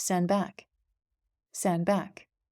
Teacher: the D is lost